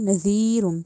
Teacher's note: نذیر میں جو ذال ہے اس کو زا کی ساؤنڈ نہیں دینی ، نذیرٌ، ٹھیک ہے، نذیرٌ بھی نہیں کہنا، نذی کہنا ہے،